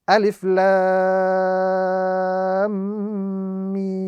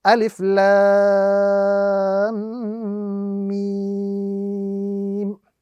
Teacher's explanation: Lam would be pronounced separately with the prolongation, after which Lam itself would then be joined to the Mim because of the tashdid. And then the Mim would be pronounced with the prolongation to the duration of 3 to 5 seconds.